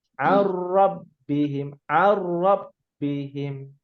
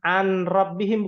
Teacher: Pasti dia akan pindah. Nunnya jadi hilang, berpindah kepada huruf ra. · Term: Idgham bila guna